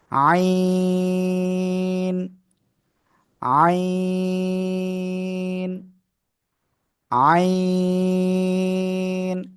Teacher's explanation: এটা উচ্চারণ হবে কি, গলাটা চেপে বাতাসটা বন্ধ রেখে